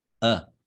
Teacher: Cuando hablamos más rápido, simplemente decimos a. Es un sonido mucho más corto.